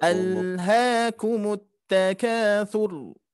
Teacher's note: huruf ro tafkhim yang mana dia harus terbaca tebal